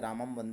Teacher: अनुस्वार का उच्चारण आधि म या न के समान किया जाता है